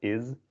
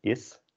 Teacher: Nice and easy, same as in English. Although in English you can pronounce it more as a z, is. And in Dutch it's an s, is.